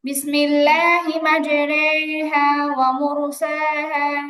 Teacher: মাজরে টান হবে, একারের মতো উচ্চারণ হবে, তবে টান হবে। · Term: ইমালা